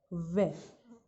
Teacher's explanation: जब हम वे का उच्चारण करते हैं तो हमारे ऊपर के दांत हमारे नीचे वाले होठों को आकर छूते हैं